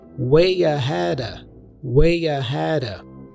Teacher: The D for ahead has a flap sound, ra, which connects with the preposition of, which then is reduced to a schwa sound, So we say way ahead of, way ahead of.